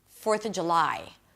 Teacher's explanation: the word 'of' is often reduced to a simple schwa sound 'uh'